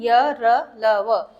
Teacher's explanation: जब हम इन व्यंजन का उपयोग करते हैं तो जो हमारी जो जीभ है वो मुंह के किसी भाग को पूरी तरह से स्पर्श नहीं करती है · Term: अंतःस्थ व्यंजन